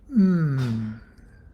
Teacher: the lips are closed and you're drawing it in through the nose with an M